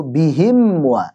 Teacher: Walittihadi, dan karena samanya antara mim dengan waw. Mim sama waw keluarnya dari dua bibir sekaligus dua-duanya.